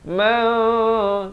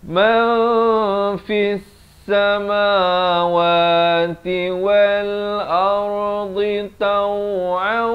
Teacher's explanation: Di sini kena baca dengan man, disamarkan. Nun pun tidak, fa pun tidak, dengan kadar panjang 2 harakat. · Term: ikhfa hakiki